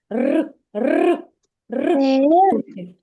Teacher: кінчик язичка піднятий за за верхніми зубчиками і вібрує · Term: звук р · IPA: [р]